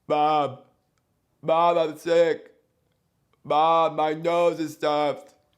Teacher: If you think about when you are sick, your nose is full of junk. Therefore, sound cannot resonate in the nasal cavity. · Speaking like your nose is clogged. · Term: mouth-only sound, raised palate